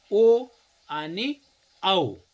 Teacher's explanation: कंठ अधिक ओठ यांचा उपयोग करून जे वर्ण उच्चारले जातात त्याला कंठोष्ठ्य म्हणायचं. आणि कंठोष्ठ्य दोनच आहेत, ओ आणि औ.